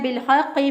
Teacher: साकिन हरफ पीछे वाले ज़बर ज़ेर पेश वाले हरफ के साथ मिलना चाहता है, इसलिए लाम साकिन को बा ज़ेर बी के साथ मिला दिया, तो अलिफ पढ़ने में नहीं आएगा। बिलहक़्क़ि, हक़्क़ि, हा को वस्ते हलक से अदा किया, और क़ाफ जो है इसको कव्वे के पास से ज़ुबान की जड़ ऊपर के तालु के साथ लगाएं तो क़ाफ अदा होता है, और चूँकि उसके ऊपर शद भी है तो इसको मजबूत क़ुव्वत से पढ़ेंगे।